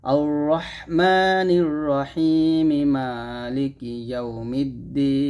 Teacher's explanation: আমরা এক আলিফ টান দিব আর মিমের উচ্চারণ করব যদি আমরা না থেমে মিলায় পড়ি দুইটা আয়াত আর যদি আমরা এখানে থেমে যাই তখন বলবো আর রহমানির রাহিম